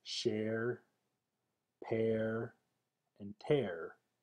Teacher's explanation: Air is the transition from mid-front eh to er, and can be heard in words like share, pair, and tear. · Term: vocalic R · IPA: /ɝ/